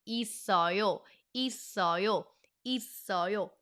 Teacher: Now, if you say it fast, isseoyo, isseoyo, isseoyo. Notice how the seu carried over to the second syllable and that's why we call it the carry over rule and that only applies when there is a patchim on the first syllable or the middle syllable, doesn't matter. · Now if you say it fast, 있어요, 있어요, 있어요. Notice how the s carried over to the second syllable.